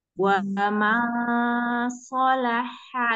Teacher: ikhfa nun sukun ketemu sot